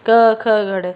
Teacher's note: ये सारे ही कहाँ से बोले जाते हैं? कंठ से बोले जाते हैं। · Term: क वाला जो वर्ग